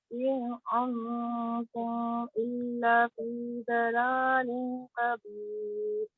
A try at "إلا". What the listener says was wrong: إلا لمبا إلا کو لمبا کریں